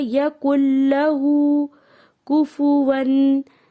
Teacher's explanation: لام کی جو حرکت ہے اس کو لمبا نہیں کرنا ہے، یکن لہ نہیں کرنا، اس کو پڑھنا ہے یکن لہ کفواً۔